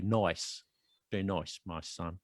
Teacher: and the I becomes oi.